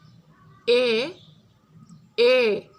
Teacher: এ ধ্বনির উচ্চারণটা ই ধ্বনির মতো সামনের দিকেই হয় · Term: মধ্যাবস্থিত সম্মুখ স্বরধ্বনি